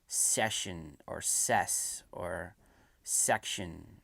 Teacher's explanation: the front of the tongue presses against the top of the mouth, just before the teeth, the top row of the teeth. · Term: S sound